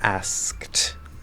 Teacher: It's supposed to be a T sound, not a D sound. · because the sound before the ED is voiceless, so we just go k to t, not k to d